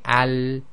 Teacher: So this has got stoppage of breath. So when we say al, there's no burst of air at the end, and it's between stoppage and continuation, not completely stops and not carrying on too long. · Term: lam